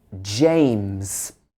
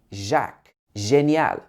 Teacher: So it starts with a plosive in the British sound. It should be j, d. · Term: j sound